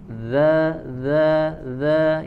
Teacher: ujung lidah ditempelkan ke ujung gigi seri bagian atas